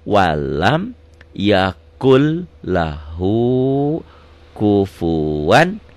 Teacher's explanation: walam yakun jadi yakul, ini idgom, melebur